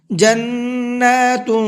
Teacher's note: تنوین کے اندر تھوڑا سا اخفا کرنا ہے، آواز کو ناک میں چھپا کر کے پڑھنا ہے